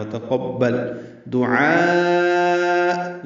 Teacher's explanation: ہے، وتقبل دعاء، یہ لوگ پڑھتے ہیں دعا، دعا غلط ہے، دعاء عین کے ساتھ ہے، عین وسط حلق سے ادا ہوتا ہے ، اس میں مد واجب ہے، مد متصل ہے، الف مدہ · بعد حمزہ آنے کی وجہ سے لمبا کرنا ہے اس کو، دعاء آخر میں حمزہ ہے، وہ جھٹکے سے پڑھا جائے گا